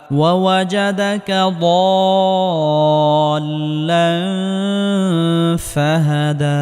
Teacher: তানবিনের পরে ইকফার হরফ ফা আসার কারণে ইকফা গুন্না করে পড়তে হবে